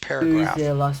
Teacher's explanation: pronounce that p with more aspiration